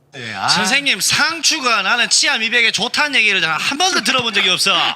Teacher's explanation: Yeah, that sounds like dialect. His intonation goes up and down real fast.